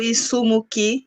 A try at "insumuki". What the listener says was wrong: Insumuki, tu prononces bien la nasale, Insumuki.